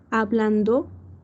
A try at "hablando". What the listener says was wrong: hablando, no hablando, porque hablando tendría el acento en la tercera. Hablando.